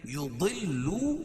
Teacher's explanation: یضلو واو مدہ، ضاد کو پر پڑھیں گے